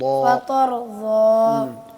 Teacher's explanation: پھر دوبارہ پڑھیں, را کو ہلائیں مت, موٹا کریں. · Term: را موٹا